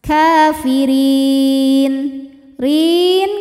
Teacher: huruf ro dibunyikan secara tarqik karena berharakat kasrah maka dibaca tipis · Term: tarqiq